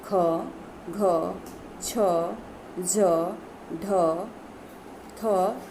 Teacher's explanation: जिन व्यंजनों का उच्चारण करते समय श्वास वायु की मात्रा अधिक निकलती है उसे महाप्राण व्यंजन कहते हैं